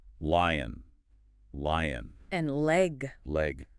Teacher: your tongue tip goes up uh behind your top teeth. Yeah. Touches that ridge there. Right. But the air flows around the sides of the tongue. Ll. It feels smoother somehow. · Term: L sound